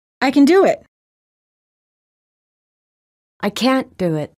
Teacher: auxiliary verbs are stressed in their negative forms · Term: negative auxiliaries